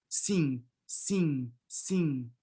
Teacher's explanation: this final M, you don't pronounce it. It's just an orthographic convention. Just nasalize the E and you're good to go. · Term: nasal counterpart